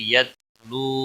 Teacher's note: باقی تا کو ہلانا نہیں، باریک تا ہے